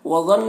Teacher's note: یہ جو الف مدہ ہے یہ نہیں پڑھا جائے گا کیونکہ واو اور یہ دونوں الگ الگ کلمہ ہے۔ وظن ضا حروف مستعلیہ میں سے ہے، پر پڑھیں گے، نون مشدد غنہ ہوگا